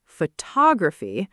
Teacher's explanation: Photograph with clear stress on the first syllable versus photography where the stress moves and suddenly different vowels turn into that same soft schwa sound